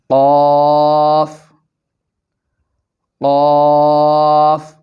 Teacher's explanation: قاف کو پڑھتے وقت زبان کی جڑ اور تالو کے نرم حصہ کو آپس میں ملائیں گے۔